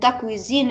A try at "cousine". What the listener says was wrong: Cousine, cousine, c'est pas cuisine. Cousine.